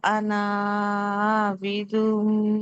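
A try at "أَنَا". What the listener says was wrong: అనా దీర్ఘం తీయకూడదు, ఎందుకంటే మనం అలిఫ్ లేదనుకున్నాం కదా. నూన్ ఫథా నా, వలా అనా ఆబిదుం.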